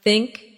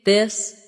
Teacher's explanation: For think it's soft. For this it's voiced.